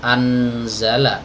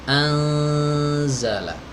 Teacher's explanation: Nun yang mati ketemu huruf Zai maka Nun nya dibaca samar ya Bukan dibaca jelas anzala bukan tapi amzallag ikhfa namanya Hai